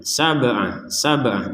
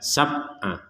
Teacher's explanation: ba sukun ya dibaca dengan qalqolah ya dengan pantulan